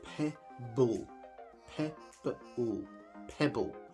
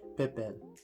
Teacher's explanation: You can hear the P and the B sound exactly the same.